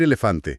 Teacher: O sea, tenemos la A que te exige abrir la boca grande, abierta como en la palabra casa. Luego pasamos a la e, que es un sonido medio. Y fíjate, te obliga a estirar los labios casi en una línea recta, como una pequeña tensión.